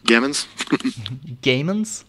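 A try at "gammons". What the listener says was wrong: That's pronounced Jamins, actually. Sorry. I know you've been saying gamins, but yeah.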